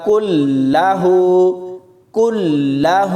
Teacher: کاف کو لام کے ساتھ ملاتے ہوئے سختی سے پڑھنا ہے